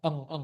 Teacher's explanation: N titik atas itu seperti eng gitu ya, pokoknya eng, dia dari tenggorokan, suara tenggorokan